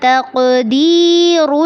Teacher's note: ذَلِكَ تقدیر میں قاف پہ قلقلہ کرنا ہے اور را کو پر کرنا ہے. را کو جب لام کے ساتھ ملائیں گے تو اس کو نرمی سے ادا کرنا ہے.